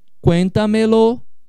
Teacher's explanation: Cuéntamelo vira uma sobresdrúxula. Então dá uma quarta sílaba tônica.